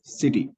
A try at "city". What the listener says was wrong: You said CT. So you have unnecessarily stretched the sound. CITY. Here I is a short vowel sound, right? So we don't have to stretch it, right? City, city.